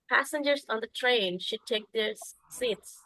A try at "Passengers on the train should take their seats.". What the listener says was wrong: That's very good,